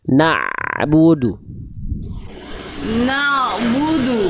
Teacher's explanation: Jadi bukan jangan na yang dipanjangkan. Jadi dari tengah tenggorokan. Na-nya satu harokat. Na langsung masuk ke ainnya.